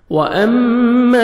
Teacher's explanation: میم مشدد غنہ کریں گے، نوز میں ساؤنڈ لے کے جائیں گے